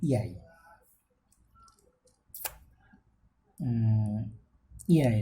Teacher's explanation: the vowel glide begins from the positions of a front rounded vowel between half close and half open towards the positions of a centralized front rounded vowel above half close.